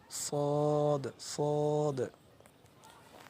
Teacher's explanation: জিহ্বার আগা, সামনের নিচের দুই দাঁতের পেট ও আগার সঙ্গে লাগাইয়া উচ্চারিত হয়। দেখেন, সামনের নিচের দুই দাঁতের পেট ও আগার সঙ্গে লাগাইয়া সদ উচ্চারিত হয়